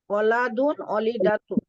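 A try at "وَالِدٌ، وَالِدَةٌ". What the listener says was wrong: ও টান দিতে হবে। ওয়ালিদ, ওয়ালিদুন, ওয়ালিদাতুন।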